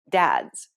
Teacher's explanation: It starts off as a d sound, but ends with a z sound.